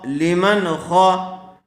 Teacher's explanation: نون ساکن کے بعد حروف حلقی میں سے خا آیا ہوا ہے، اس لیے بغیر غننے کے جلد اظہار کر کے پڑھیں گے۔